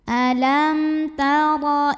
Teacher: cara bacanya adalah mim sukunnya dibaca dengan izhar atau jelas dibunyikan secara tafkhim karena RO nya berbaris fathah cara bacanya adalah ditebalkan Jadi angkat pangkal lidah kita